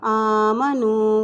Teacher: الف کے پر کھڑی زبر ہے اس لیے اس کو ایک حرکت لمبا پڑھیں گے۔